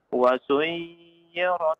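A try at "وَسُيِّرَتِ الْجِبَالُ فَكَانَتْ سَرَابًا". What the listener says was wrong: Jangan dipanjangkan, tasdid saja. Wa suyyiratil jibalu fakanat saraba.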